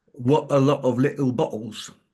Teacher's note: the sound t is replaced by the glottal, what we call the glottal stop